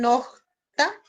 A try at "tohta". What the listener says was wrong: Tohta, tohta, con T, tohta.